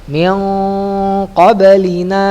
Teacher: Qaf ini letak di pangkal lidah ya · Dari baris ketiga sampai akhir contoh impa yang dibaca tarkik, artinya tipis ya. Dibaca samar, hampir mirip suara N dan NG yang mendekati huruf setelahnya. Ilmu tajwid tidak mengenal suara NG kecuali qaf dan kaf ya. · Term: nun bertemu qaf